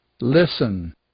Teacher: É o caso do listen, por exemplo, onde a gente não diz o T.